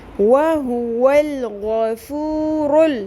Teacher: اصلی، وَهُوَ الْغَفُورُ، را پیش لام رل، را پر، وَهُوَ الْغَفُورُ، غوین بھی پر ہوگا، را بھی پر ہوگا ، وَهُوَ الْغَفُورُ، غوین کے اوپر سنگل حرکت ہے، فا پیش